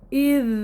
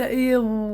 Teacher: مسار حرف الذال إلى الأسفل، يعني حرف مرقق، إذ وليس إذ.